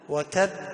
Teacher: وتب مشدد، وقلقلة، يعني اجتمع 2، التشديد مع القلقلة